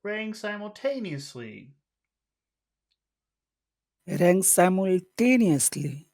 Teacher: go from high to low